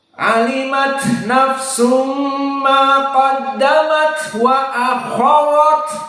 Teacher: Pertama kha tafkhim, ra tafkhim, ta hams.